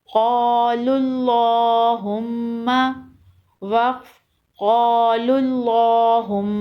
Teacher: قوف الف زبر قا، لام لام پیش لل، قالل، لام کھڑا زبر لا، قال اللہ، حامیم پیش ہم، قال اللہم، میم زبر ما، قال اللہم، وقف قال اللہم۔ اللہم کے لام سے پہلے پیش ہے اس لیے لام کو موٹا پڑھیں گے، اور میم مشدد ہے یہاں غنہ کریں گے